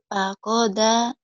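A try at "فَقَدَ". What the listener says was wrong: fakoda. Danya yang kurang keras nih. Fakoda, dada. Gitu dah.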